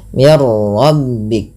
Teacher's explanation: Jangan banyak sekali takrir pada huruf r tapi sekali saja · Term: ro dibaca dengan tebal